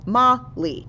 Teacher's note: We say ma a little bit louder. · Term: main syllable